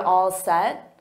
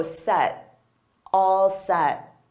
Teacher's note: And notice I don't push out that T, so set, all set.